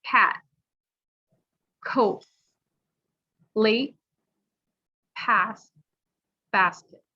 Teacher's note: for the t it won't be released · So if you put your hand in front of your mouth and say the word, you shouldn't feel the air hitting your hand. You're kind of swallowing the T. You start the T sound and you just don't release. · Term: hell t, held T